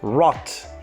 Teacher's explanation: so d is changed to t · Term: devoicing